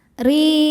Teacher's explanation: huruf ro dibaca secara tarqiq karena harokatnya di bawah yaitu kasroh. Cara bacanya ditipiskan.